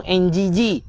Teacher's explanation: Nun ni kita kena baca dengan dengung yang tebal. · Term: ikhfa hakiki